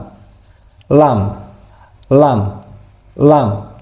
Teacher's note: Jadi, ee pangkal lidah itu ee menyentuh di langit-langit mulut.